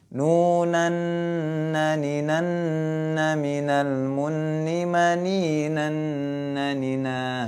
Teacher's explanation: Dia termasuk huruf-huruf min nur. Nah, itu nun sukun bertemu dengan huruf nun. Jadi dimasukkan ke huruf setelahnya dengan gunnah. Gunnah itu artinya mendengung.